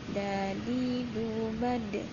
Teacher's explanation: Badnya ini dipantulkan karena huruf dal adalah termasuk huruf qalqalah.